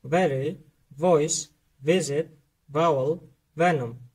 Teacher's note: барои талаффузи ҳарфи V бошад, дандонҳои болоро ба лаби поён часпонда V мегӯем.